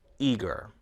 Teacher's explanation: words with two or more syllables one syllable is stressed and the word eager the first syllable is stressed